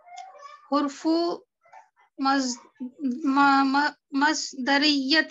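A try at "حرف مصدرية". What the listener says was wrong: Harf. It is harf, not hurf. Okay, harfu Masdariah. Okay, harfu Masdariah.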